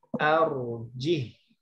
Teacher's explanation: Arjih, mestinya dibacanya arjihi. Tapi dia pada posisi ini dibaca sukun.